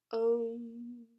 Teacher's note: pronounced by protruding the lips forward as though you're holding a pencil and in addition to that you bring the energy down through the nose so om which has a very different experience in being to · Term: anuswara